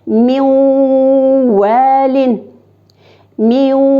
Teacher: Hem biz ve harfin ikiletip burun aşağı çıkarıp okuyuz. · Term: idgam